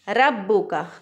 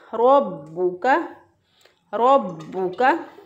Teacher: रॉ को यहाँ पे हम पुर पढ़ेंगे, मोटा पढ़ेंगे। अगर कोई इसको पढ़ दे रब्बुका तो गलत हो जाएगा।